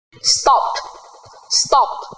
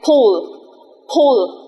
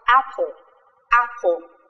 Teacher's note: không dùng giọng của mình mà gần như chỉ bật hơi ra thôi ạ